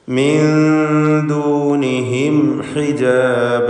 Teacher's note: പദത്തിൻ്റെ അന്ത്യത്തിൽ വന്ന സാക്കിനത്തായ മീം അതിനെ ഇൽഹാർ ഷഫഈ നൽകി മണിക്കാതെ വെളിവാക്കുക · മിൻ ദൂനിഹിം സാക്കിനത്തായ നൂൻ ശേഷം ദാൽ. ഇവിടെ നൂനിനെ ഇഖ്ഫാ ഹഖീഖി നൽകി മറച്ചു മണിക്കണം.